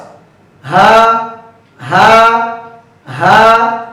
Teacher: কণ্ঠনালীর শুরু থেকে হা হরফটি উচ্চারিত হয়। হা হরফটি পড়ার সময় আওয়াজ একেবারে নরম হবে, চিকন হবে, নিচের দিকে দাবিত, হামস মানে বাতাস চালু, আওয়াজও চালু।